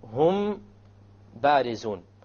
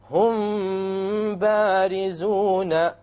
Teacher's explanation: You have a meme followed by a ba, you make the ikhfa and you have a ghunna. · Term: ikhfa shafawi